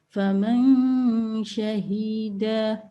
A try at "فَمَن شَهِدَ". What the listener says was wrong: Again, this ha sound is you are prolonging it unintentionally.